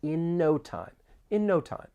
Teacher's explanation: there are some overlapping sounds with the final N sound in and the beginning N sound in no